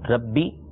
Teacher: عربی کے اندر ہے ربی, یعنی با کے نیچے جب زیر پڑھیں گے تو بی پڑھیں گے, یہ مجہول انداز میں نہیں پڑھیں گے